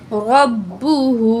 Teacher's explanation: रा की ज़बर को बा तशदीद से मिला के पढ़ेंगे, बा में सख्ती पाई जाएगी तशदीद की वजह से। रा ज़बर बा, रब बा पेश बू, रब्बु हा उल्टा पेश मद हू, रब्बुहु।